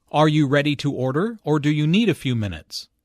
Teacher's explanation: The word or signals a choice here. Notice the rising intonation on order and the falling intonation on minutes. The first choice is are you ready to order?